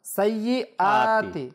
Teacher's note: সাইয়্যাতি এটা হবে না, হামজাটা একটু মোটা হবে, একটু শক্ত করে পড়তে হবে। সাইয়্যাতি হবে না, সাইয়্যাতি।